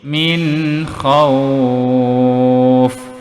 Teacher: Min, di sini nun bertanda sakinah berjumpa huruf kha, maka wajib kita baca jelas, terang dan nyata pada bunyi huruf nun yang bertanda sakinah ini, min, dan tidak perlu didengungkan kerana huruf kha ini adalah huruf izhar halqi.